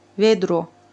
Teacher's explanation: rus dilində bu vedro kimi işlənir və ahəng qanuna tabe deyil